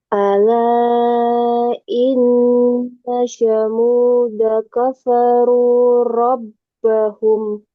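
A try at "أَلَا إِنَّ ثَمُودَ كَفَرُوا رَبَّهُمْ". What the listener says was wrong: Ya, ini pengucapan taknya ya masih kurang pas. Jadi ujung lidah nah, tempelin ke gigi ini, gigi seri atas. Ta, ta, at, it, ut. Jadi bunyi ta ditekan, ditempelin dulu baru eh, ta. Tempelin baru ucapkan hurufnya.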